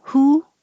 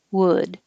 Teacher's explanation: your tongue is a little higher for the who